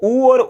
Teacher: उ और उ का उच्चारण करते हो तो ओष्ठ एकदम गोल बनते हैं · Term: वृत्ताकार स्वर